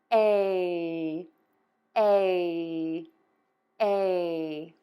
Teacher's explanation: wide open circle mouth, tip of your tongue is low, back of your tongue is pulled up, and then you're going to move to a smile for the end of that sound. When you move to the smile your tongue will be high and flat. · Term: long a sound, long A sound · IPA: /ˈmaɪˌgreɪn/